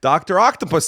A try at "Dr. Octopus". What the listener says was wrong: Why are you hitting puss so hard there?